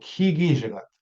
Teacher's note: when it ends in a short I, we elongate the final vowel.